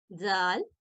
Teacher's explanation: जाल ज जो, जिस तरह से हम दाल को अदा करते हैं इसी तरह जुबान का छोटा हिस्सा आगे अगले दोनों दांतों के साथ लगाएं तो जाल की अदायगी होती है